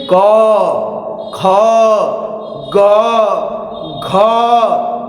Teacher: अब क का देखते हैं। क वर्ग में क ख ग घ ये जितने पांच लेटर है यहां से बोले जाते हैं कंठ से।